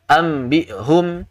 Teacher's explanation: tergesa-gesa dalam membacanya sehingga gunnah tidak dibaca dengan sempurna, tidak ditahan dua harakat tadi